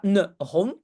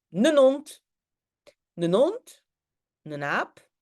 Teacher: quand le mot commence par H, comme hond, un chien, Dans le Tussental, on ne dit pas la H. On fait comme si la H n'est pas là.